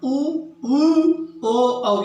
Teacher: पश्च स्वर उ, ऊ, ओ, औ, ये जीवा के पश्च भाग से इनका उच्चारण होता है।